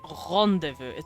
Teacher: The French R I feel like is a little more throaty.